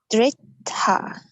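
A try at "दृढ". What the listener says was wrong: Dridha. Even the D has a dot, which is like a duh. It's a duh. Dridha. Gotta put the tongue and touch it to the top of your mouth and go duh.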